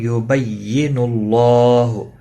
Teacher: اللہ کا لام پیش کی وجہ سے پر پڑھا جائے گا